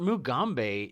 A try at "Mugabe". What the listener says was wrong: It's Mugabe. You said Mugambe. It's Mugabe. You put an M in there.